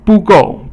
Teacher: 不 够 is both fourth tone. Fourth tone is falling.